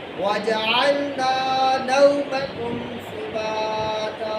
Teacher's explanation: واو ساکن سے پہلے زبر آئی تو نون زبر وا نو اور اس کو لمبا نہیں کیا جائے گا